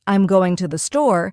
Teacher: in the phrase, I'm going to the store, the stress naturally falls on going and store. The smaller words like I'm and to the R less emphasized and spoken quickly. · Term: stress pattern